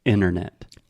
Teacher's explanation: what I'm trying to highlight is we do not say the first T.